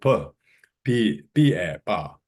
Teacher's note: Pa should be pa, the bilabial, unaspirated bilabial, doesn't have H. Because you put H, then it becomes aspirated bilabial pa, which it doesn't have in Sanskrit.